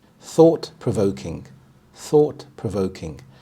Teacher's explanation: the primary stress is on the second part of the compound word